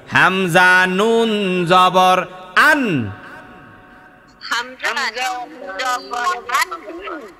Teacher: মাখরাজ জিহ্বার আগা, তার বরাবর উপরের তালুর সঙ্গে লাগাইয়া।